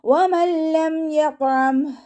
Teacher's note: നൂൻ സാക്കിനയ്ക്ക് ശേഷം ഇതാ ബിലാഹുന്നയുടെ അക്ഷരമായിട്ടുള്ള ലാമ് വന്നിട്ടുണ്ട്. നൂൻ സാക്കിനയെ നമ്മൾ ലാമിലേക്ക് ലയിപ്പിക്കുന്നുണ്ട്, പക്ഷെ ഉന്ന കൊടുക്കാതെ ഓതി കൊടുക്കുക. വമല്ലം എന്ന് മണിച്ചിട്ട് ഓതരുത്.